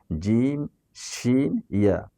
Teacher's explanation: Number 2, জিহ্বার গলা থেকে একটু আগে, সামনের স্থান থেকে কাফ উচ্চারিত হয়। নাম্বার 3, জিম শিন ইয়া জিহ্বার মধ্যখান থেকে, হ্যাঁ, মিডল অফ দ্য টাং, জিহ্বার মধ্যখান থেকে 3টি হরফ উচ্চারিত হয়।